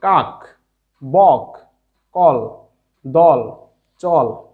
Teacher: এই কাক অর্থাৎ লাস্ট শেষের ক এর সাথে কোনো অ উচ্চারিত হয়নি, তাই কাক একটি একাক্ষর বিশিষ্ট বদ্ধাক্ষর, তাই এর শেষ বর্ণে হর্ষ চিহ্ন হবে, অর্থাৎ কাকের ক এর অর্থাৎ শেষের যে ক, এই কর সাথে হর্ষ চিহ্ন হবে।